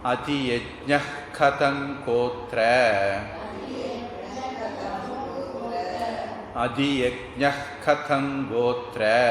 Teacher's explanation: அதியஜ்ஞ, இந்த அதியஜ்ஞல விசர்க்கம் இருக்குது. அந்த விசர்க்கத்துக்கு பிறகு கா வந்திருக்கு, வல்லினம். அப்போ கா வந்ததுன்னா அதை வந்து நாம் ஜிஹ்வா மூலிய உச்சாரணமாக சொல்லணும். தமிழில் அது புரிய மாதிரி சொல்கிறதா அஹன்னா மாதிரி சொல்லணும்.